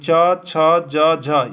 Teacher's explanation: च छ ज झ ये तालू से उच्चारण होगा